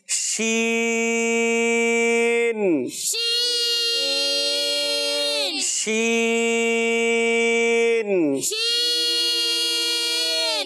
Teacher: شین میں سیٹی نہیں ہوتی. اس میں ایک اور صفت ہوتی ہے جس کا نام ہے تفشی, منہ میں آواز پھیلتی ہے